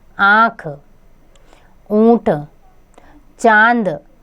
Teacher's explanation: जो स्वर मुख और नाक से बोले जाते हैं, उन्हें अनुनासिक कहते हैं। इसका सूचक चंद्र बिंदु अंगः है, जिसे वर्णों के ऊपर लगा देते हैं, जैसे आँख, ऊंट, चांद आदि।